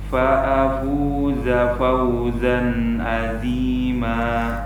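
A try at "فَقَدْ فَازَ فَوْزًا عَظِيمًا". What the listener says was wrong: Sudah bagus, dha-nya kita tebalkan sedikit lagi. Jadi seperti yang sudah kita sampaikan ya di video-video sebelumnya, untuk memendekkan huruf zai ini kita punya momen ya, punya hal yang bisa kita gunakan untuk ancang-ancang kita agar zai-nya ini pendek begitu.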